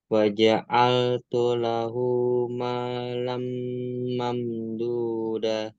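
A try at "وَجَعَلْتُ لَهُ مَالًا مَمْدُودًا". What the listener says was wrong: Da-nya 2 harokat, jangan da. Da, kalau da, cuma da itu 1 harokat aja. mamduda, 2 harokat.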